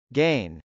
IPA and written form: gˈeɪn (gain)